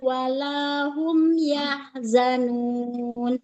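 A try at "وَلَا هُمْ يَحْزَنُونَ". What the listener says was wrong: Nah, jangan yah, tapi yahzanun. Dia ya-nya jangan panjang ya. Walahum yahzanun.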